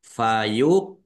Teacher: qaf sukun bacaan kolkolah dibaca memantul ditampakkan pantulannya. Fayuq jadi memantulnya di tenggorokan ini.